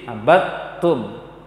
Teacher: Kalau abattum dal sukun digabung sempurna ke dalam ta, karena dia bersifat sama-sama tipis dia, dal dengan ta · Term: idgham mutajanisain